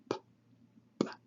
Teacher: So P is a stop, a labial stop.